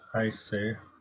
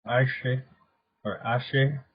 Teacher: So in modern Basque, the H sound is only used or pronounced in the French part of Basque country